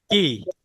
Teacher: কাফটা জিহ্বার গোড়া থেকে একটু আগে বাড়াইয়া অর্থাৎ জিহ্বার মাঝখানেও না একবারে গোড়াতেও না গোড়া এবং মাঝখানের মাঝামাঝি জায়গা থেকে কাফটা উচ্চারিত হয়